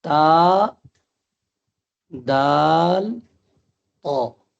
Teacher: تا، دال، طا، ان کا مخرج ایک ہے، کیفیت الگ الگ ہے۔ مثلا تا پڑھیں گے ہم تو باریک پڑھیں گے، دال پڑھیں گے تو باریک پڑھیں گے، طا پڑھیں گے تو پر پڑھیں گے یعنی موٹی آواز میں